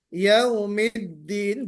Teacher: दाल पर भी शिद्दत होनी चाहिए, दाल क्लियर पढ़ी जानी चाहिए